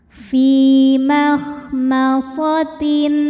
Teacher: tanwin kita bunyikan dengan jelas jadi bunyinya n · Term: izhar halqi